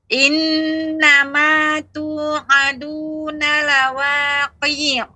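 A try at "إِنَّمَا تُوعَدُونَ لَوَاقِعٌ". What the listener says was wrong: Q-nya tidak panjang. Ain. Langsung ke ain. Lawaqi'.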